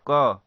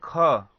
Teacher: जैसे क हम बोलते हैं तो क्या होता है, कम श्वास निकलता है। लेकिन वही ख बोलते हैं तो क्या होता है, अधिक श्वास निकलता है। इसीलिए क आपका अल्प प्राण होता है और ख क्या होता है, महाप्राण होता है।